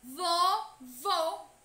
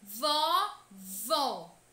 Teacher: observem a palavra vovô e o acento circunflexo presente nesta palavra faz com que o som da vogal seja emitido de forma fechado